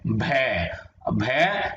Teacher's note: आगे है भ, ये आवाज आ रही है ओष्ठ, यानी हमारा ये देखो ना ओष्ठ, भ की आवाज आ रही है ओष्ठ से